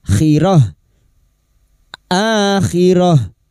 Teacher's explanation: Karena kita memilih wakaf di sini, maka tak marbuto ini menjadi sukun, bunyinya khirah